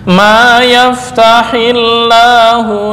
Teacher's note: asalnya yaftah Allahu karena digabung diwasalkan menjadi ma yaftahillahu